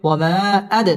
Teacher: দাল কলকলার হরফ ধাক্কা দিয়ে পড়তে হবে